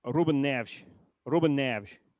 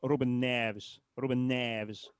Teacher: the e s at the end is this sort of soft sh sound